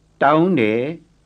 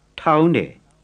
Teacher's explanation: Plain T first, aspirated second.